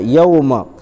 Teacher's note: واویلین کو نرم آواز کے ساتھ جلد ادا کریں گے